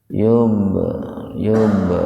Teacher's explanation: huruf ba mati di tengah-tengah kata. Membacanya itu dipantulkan secara ringan. Sugro itu ringan, kecil. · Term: qalqalah sugro